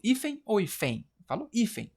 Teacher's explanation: a sílaba tônica é a penúltima, é um paroxítono